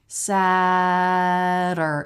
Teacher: Another flap T, sadder, sadder. Don't put a real full vowel in here. It's just schwa R. And R takes over schwa. Sadder. So it's from that flap right into the R sound.